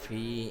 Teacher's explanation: এখানে জেরের পরে ইয়া সাকিন হওয়ার কারণে এক আলিফ টেনে পড়তে হবে